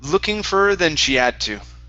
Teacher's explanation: so we can drop the h on had